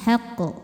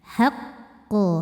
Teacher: Maka qof ini kita pantulkan berbeda dengan biasanya. Jadi kalau enggak ada tasydid pantulannya langsung haq. Kalau ada tasydid pantulannya telat keluarnya haqq. Jadi untuk menyempurnakan tasydidnya. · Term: qalqalah akbar